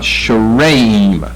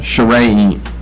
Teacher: short A, then long A, accent the middle syllable